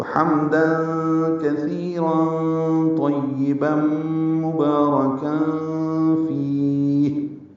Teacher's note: ہے، را پر پڑھنا ہے، کام میں اخفا ہے، مبارکا فی، فی میں فا کو لمبا کر دیں گے اور ہا ساکن پہ ہمس ہوگا